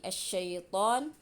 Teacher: cara membacanya adalah dengan menggabungkan (idgham) alif lam ke dalam huruf syamsiyah. Karena salah satu ciri umumnya adalah tashdid. Jadi, alif lam tidak diucapkan dengan jelas. Oleh karena itu, disebut idgham syamsiyah karena ia menyatu atau digabungkan ke dalam huruf syamsiyah.